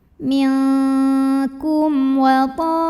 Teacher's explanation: Maka cara baca mim sukunnya adalah dibaca dengan jelas. Jadi masih bunyi M jelas dan tidak ditahan. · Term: idhar syafawi